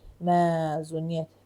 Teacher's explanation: Mə uzanacaq və y-nın da biri düşəcək.